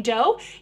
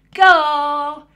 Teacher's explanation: Oh, I made that way back here in my throat.